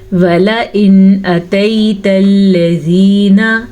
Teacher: وَلَئِنْ أَتَيْتَ الَّذِينَ، نون ساکن کے بعد حروف ہلکی میں سے حمزہ آ گیا ہے تو ہم نون ساکن کو ظاہر کر کے پڑھیں گے اور بغیر غنے کے پڑھیں گے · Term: اظہار